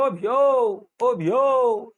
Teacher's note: जो व्यक्ति दूर होते हैं उनको हम बोलते हैं ओ भ्यो, ओ भ्यो, इंदौरी भाषा है ये, ठीक है ना। तो इसमें भ्यो में ज्यादा लंबा खींच देते हैं। तो ये सब प्लुत स्वर का काम है।